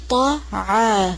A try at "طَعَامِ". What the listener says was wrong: صرف طاعة کو موٹا کریں گے الف کو نہیں موٹا کریں گے پھر سے ولا